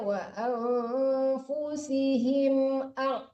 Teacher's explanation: jangan him kelamaan di situ. Jadi jangan dengung kedengarannya ya.